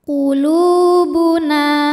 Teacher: Alif yang sebelumnya berharakat fathah maka huruf nun dipanjangkan dua harakat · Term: Mad Thobi'i zohiri